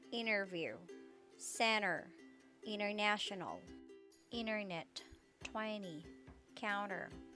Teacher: the t after an n is often silent in american pronunciation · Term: silent t after n